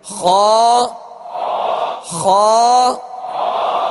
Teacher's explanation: خا کو پر کرتے ہوئے جڑ زبان کو آپ اوپر اٹھائیں گے تو خا ادا ہوگا، یعنی خا پر پڑھا جائے گا. · حلق کے اوپر والے حصے سے ادا ہوتا ہے